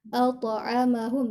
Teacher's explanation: To ini ketika sukun dia dipantulkan karena termasuk huruf qalqalah atau huruf yang dibaca memantul ketika sukun. At'amahum. Jadi harus terdengar ya to pantulannya.